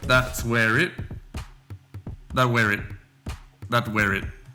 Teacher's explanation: the T sound in that becomes more of a D sound. And also we have the intruding sound of R that links up where it. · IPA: /ðæds weə rɪd/